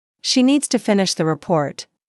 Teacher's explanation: Stress needs and report and let the small words fall quietly.